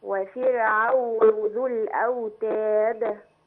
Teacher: والاجمل لو راعينا ترقيق الراء في كلمه وفرعون